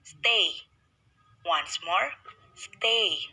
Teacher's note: the glide begins in the position for a moving up and slightly back towards e